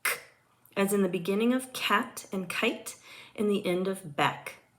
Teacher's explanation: Velar sounds are produced by pulling the back of the tongue back to the soft palate or velum. K is an unvoiced velar stop sound.